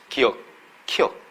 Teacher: 혀 뿌리가 지금 목구멍 뒤를 한번 닫았다 열립니다.